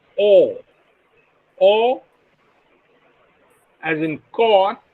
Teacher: a back rounded vowel between half closed and half open